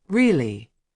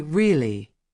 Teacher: When someone says really with a high tone, it means they are surprised. When they say really with a low tone, it means they already knew. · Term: intonation